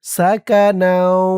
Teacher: নুন দিয়ে এই তাসদিদ ওয়ালা ওয়াওকে ধরবে। ঈদগামে বাগুন্নাহ গুন্না হবে। তানবীরের পরে ঈদগামে বাগুন্নার ৪ হরফের ১ হরফ ওয়াও আসছে তাসদিদ সহকারে।